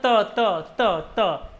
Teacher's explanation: दांत पर लग रही जीभ सीधी, त, त, त, देखो लगा के देखना, त। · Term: त वर्ग